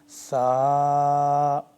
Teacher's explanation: دونوں دانتوں کے درمیان میں زبان کو لا کے زبان ذرا باہر کی طرف نکالنی ہے